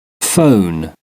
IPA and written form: fəʊn (phone)